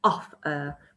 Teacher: Offer. So I have to really stress the first syllable, offer, but the second syllable isn't as stressed.